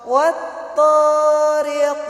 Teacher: Kemudian ro-nya berharokat kasroh adalah ro tarkik atau ro tipis. Kemudian huruf qaf yang disukunkan di akhir kalimat atau di waqaf, maka qafnya adalah qalqalah kubra.